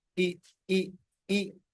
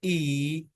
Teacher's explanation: Or long vowels. These sounds are held longer than the short vowel